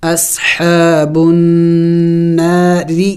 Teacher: نون مشدد پر غنہ کیا جاتا ہے، یعنی ناک میں آواز پیدا کرنا ہوتا ہے